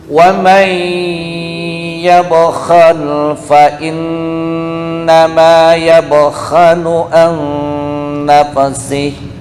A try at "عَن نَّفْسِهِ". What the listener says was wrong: Nah, fa jangan kol-kolah ya, bukan nafsi, tapi nafsi, nafsi.